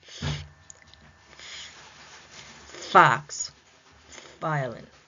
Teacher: The lower lip will approach or touch the upper teeth